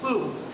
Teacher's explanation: I managed to acquire the Russian P without aspiration.